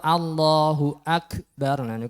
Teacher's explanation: di Pangkal lidah agak ke depan kemudian terkena langit-langit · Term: Kaf